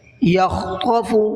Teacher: یکاد البرق یخطف ابصارہم، برق را کو منہ بھر کے پڑھنا ہے اور قاف کو بھی منہ بھر کے پڑھنا ہے۔ یخطف خا کو بھی منہ بھر کے پڑھنا ہے اور طا کو بھی منہ بھر کے پڑھنا ہے